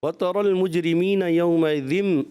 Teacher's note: ذال کی ادائیگی زا کی طرف گئی، ذال پڑھنا ہے، آپ نے زا پڑھا